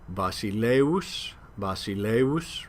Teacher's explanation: the digamma is heard as a kind of a u sound ers kind of like our um w when it blends with